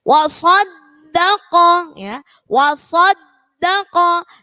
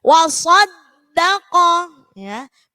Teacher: Di situ dalnya ada tasydid, maka yang ditekan pada huruf dal.